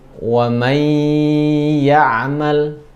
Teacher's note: karena ada guna ditahan kurang lebih dua harakat